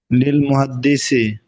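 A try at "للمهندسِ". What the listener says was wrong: মুহান্দিসি, মুহান্দিসি, মুহাদ্দিসি না।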